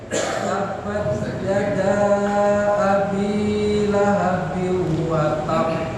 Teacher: Yang panjang danya, bukan binya. Binya kepanjang tapi lebih panjang yang danya.